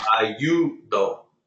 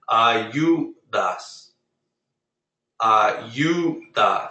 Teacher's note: You put the stress on the second to last syllable.